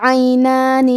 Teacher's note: عین کی ادائیگی حلق کے درمیان والے حصے سے ہے